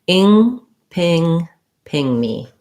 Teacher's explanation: Ping me, we would stress on the ping. And we have the I vowel, NG sound, and then tense E.